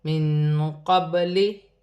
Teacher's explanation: یہاں نون ساکن ہے، نون ساکن میں اخفا ہوگا